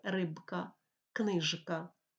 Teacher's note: не оглушується дзвінкі приголосні перед глухими рибка книжка у слові рибка к не впливає к глухий не